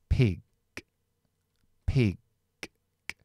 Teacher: debajo para decir que la la g está deshonor zada entonces se queda no una K aspirada así sino una G G sin la voz · después si va al final de palabra es g o incluso lo podéis dejar sin voz y dejarlo como una K que la g sin voz Es K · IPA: /ɪ/